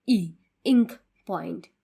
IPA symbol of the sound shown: ɪ